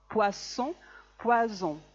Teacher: Si ponen la mano a la altura de las cuerdas vocales, ¿vale? Pueden comprobar que para decir poisson, las cuerdas vocales no vibran. Poisson. En cambio, para decir poison, sí vibran. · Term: S sorda y la S sonora